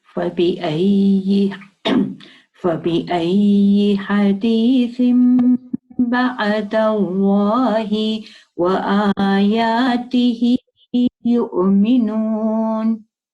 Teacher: you did replace the noon of the tanween to a meme because of the letter ba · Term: iqlab